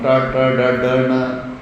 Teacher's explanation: ఇవన్నీ కూడా మూర్ధ, పళ్ళ కన్నా పైన లోపలగా ఆ స్కిన్ కన్నా ఇంకొంచెం పైన నాలుగు టచ్ అవుతుంది.